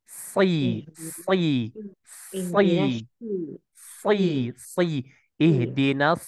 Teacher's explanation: naik tuh pangk lidahnya harusnya di bawah kemudian ee apa ee lidahnya itu di ujungnya itu di bawah kemudian pangkal lidahnya naikkan ke atas si ihdin ihdin sepertinya nanti ya E kami tidak tahu ya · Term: huruf Sin